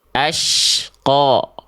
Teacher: qo tebalnya itu bukan karena monyongin mulut tapi angkat pangkal lidah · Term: huruf tebal